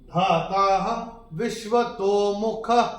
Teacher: चरण की समाप्ति पे जो विसर्ग आ रहा है, चूंकि चरण की समाप्ति पे आ रहा है तो इसका उच्चारण केवल और केवल ह ही होगा